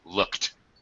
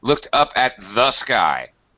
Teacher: very very fast no space between the K and the t